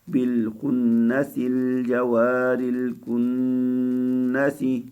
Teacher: نون مشدد پہ غنہ کرنا ہے، ایک الف کے برابر دیر لگانی ہے